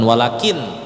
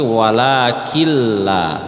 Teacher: dimasukkan ke huruf setelah nun sukun itu bukan Wakin bukan Wakin tapi wakilla dan tidak dengung